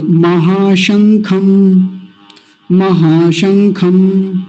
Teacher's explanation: तालव्य शकार, स नहीं बोलना